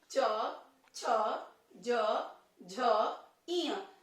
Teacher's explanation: जीभ जो है वो तालु को छूती है। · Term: च वर्ग